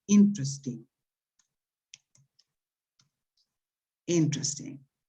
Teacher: Aquí claramente desaparece la segunda sílaba del medio.